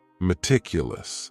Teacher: That first syllable also has that schwa, that A sound, that reduced vowel sound